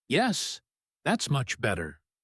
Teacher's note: With clear, falling intonation, no rise, no hesitation, just simple, warm agreement. And just like that, the whole team relaxes, because they can all hear the difference between her earlier uncertain tone and this final, confident one.